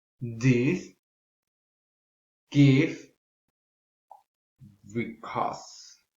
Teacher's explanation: Produced by the tongue is close to the top and the front of the mouth, and the lips are not rounded. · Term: the shorter E